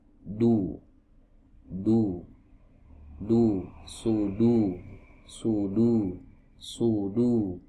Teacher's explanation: Ya, huruf dal. Ya, huruf dal ini huruf yang keluar dari ujung lidah, ya, bertemu dengan pangkal gigi seri bagian atas